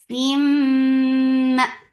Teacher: Give E sound and then attach it me. This is idgham with gunna, so keep the sound in your nose for a longer time.